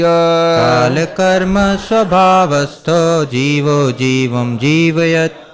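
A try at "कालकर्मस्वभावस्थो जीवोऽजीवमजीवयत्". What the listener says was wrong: जीवम अजीवयत। आप माँ जीवम बोल रहे हैं हलंत के साथ, तो उसके बाद अ भी लगाना पड़ेगा, या फिर बोलेंगे जीवो जीवम जीवम जीवयत।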